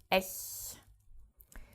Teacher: It is just some air leaving your mouth through gritted teeth, so ech. This is also this sound only exists in the German language. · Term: soft CH